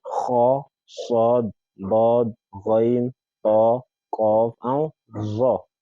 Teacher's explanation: those alphabets that when you pronounce them, you experience your tongue rising up, going up, and as such, your voice is also rising up or going up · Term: Huruf al-Isti'la